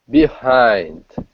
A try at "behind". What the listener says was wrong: Good, much better, excellent.